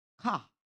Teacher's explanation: British English speakers often drop or soften the R sound.